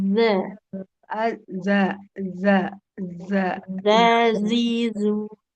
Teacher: Ujung lidah menempel ke ujung gigi sari atas. Za. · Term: huruf zalnya